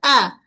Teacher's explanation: Q as q as pada lam tepi hujung lidah menyentuh pada gusi gigi atas aslamtu huruf hamzah ketatkan bunyi hamzah dari pangkal kerongkong